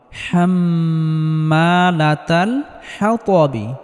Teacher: এখানে ওয়াকফ করলে বায়ে জজম ধরে পড়তে হবে এবং বা কলকলাহ করে পড়তে হবে